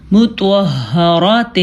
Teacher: توا کو ہم نے پر پڑھا ہے اور ہا کو اپنے مخرج یعنی چھاتی سے نکالا ہے، اور را کو بھی ہم نے پر پڑھا ہے کیونکہ را کے اوپر زبر ہے۔